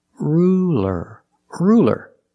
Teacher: it's a light L because it's between vowels